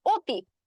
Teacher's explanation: কিন্তু তোমার হচ্ছে যখন আমি কিছু কিছু শব্দ যেমন অতি, অতি শব্দটা যখন বলতে গেলাম তখন অটা কি হচ্ছে, আমার ওর মতো একটা উচ্চারণ আসতেছে, সেক্ষেত্রে যেটা হচ্ছে যে তখন কিন্তু অধ্বনি থেকে আমার একটা বিবৃত উচ্চারণ আসতেছে।